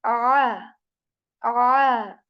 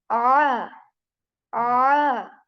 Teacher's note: I constrict the muscles of my throat. They get tighten a bit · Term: Ain